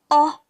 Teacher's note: The next nasal vowel is the O sound. This sounds like the O in pot.